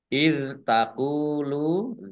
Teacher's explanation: dzal sukun bukan qalqalah, jangan dipantulkan